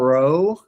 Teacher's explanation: the r sound is spoken sort of like a trill in classical, also in coin Greek